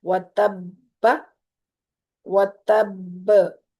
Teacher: با پہ کلکلا ہوگا اب کیونکہ ساکن کر دیا ہم نے با کو، تو اس کا کلکلا بھی ادا کرنا ہے اور اس کی تشدید بھی.